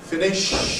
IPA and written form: ˈfɪnɪʃ (finish)